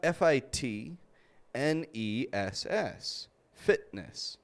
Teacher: We don't pronounce that T, we just stop it. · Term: glottal T